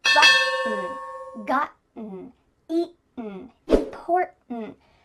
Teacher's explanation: Do you notice that my throat is stopping that T sound in the middle of the word? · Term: glottal T